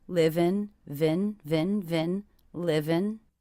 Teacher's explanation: the ending consonant sound of live links into the beginning of the next word